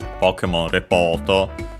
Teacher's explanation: Repoto is accented on the po, just like in English